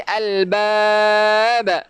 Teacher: Dan pastikan ada qalqalah. Yang ni kita panggilnya qalqalah kubra. Kita kena lantunkan albab.